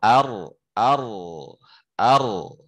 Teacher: Kalau ro ar ar, nah, nempel di langit-langit tapi ada celah sedikit masuk di situ, ya, itu namanya inhiraf